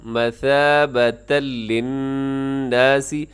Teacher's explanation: اب یہاں پر جو حرف ہے ثا، اس میں سیٹی سے آپ بچیے گا، سیٹی نہ ہو، مثابت نہیں پڑھنا بلکہ مثابۃ للناس۔